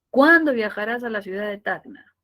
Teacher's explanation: el pronombre interrogativo siempre está en el punto más alto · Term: tono descendente